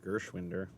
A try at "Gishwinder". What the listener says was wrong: Yeah, Gishwinder. No R. Gishwinder. So there's not an invisible R in his name.